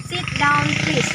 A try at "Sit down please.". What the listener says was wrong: Ulangi, kurang tepat. Sit. Sit down please. Bukan shit. Sit biasa aja. S-I-T. Sit. Biasa ya. Sit down please.